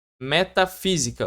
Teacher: Palavra mais forte é a antepenúltima, acentua. Metafísica, ó, você repara que é sempre a terceira. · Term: proparoxítona